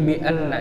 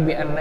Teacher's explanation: Jadi bi anna, jangan bi anna cepat, tetapi bi anna yang dipanjangkan 3 harokat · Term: guna musyaddah